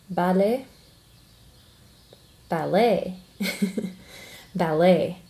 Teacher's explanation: we stress the second syllable in ballet